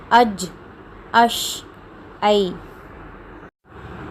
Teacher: جب ہم اج، اش اور ای کہتے ہیں تو بیچ زبان تالو کی طرف اٹھ رہی ہے، تو یہی ان 3 حروف کا مخرج ہے۔